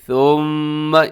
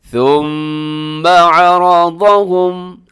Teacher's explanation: میم مشدد پہ ایک تو آپ غنہ کریں، دوسرا جو ثا ہے اس میں سیٹی کی آواز نہ ہو۔ پھر سنیے گا ثم عرضہم، را موٹا ہے اور عین کا خیال رکھیے گا۔